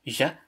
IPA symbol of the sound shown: ʑ